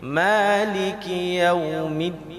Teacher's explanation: Jadi jalur kita membaca Al-Quran itu harus memanjangkan maliki.